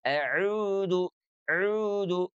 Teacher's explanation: Jadi huruf ainnya sekali lagi keluar dari tengah-tengah tenggorokan ya, wasatul halqi.